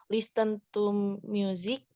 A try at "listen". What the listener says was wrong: Nah ini pas dibaca itu T-nya nggak ada ya. Listen.